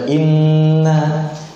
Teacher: dua harokat dia kadarnya, bukan lebih, bukan 2,5, bukan 3, 2 harokat · Khayshum ya, wa huwa a'lal anfi wa aqsahu min ad-dakhil. Maksudnya dia dari dalam ya, bawah hidung. Itu makhraj huruf gunnah.